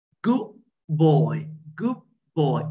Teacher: Da plus ba would turn to be ba plus ba.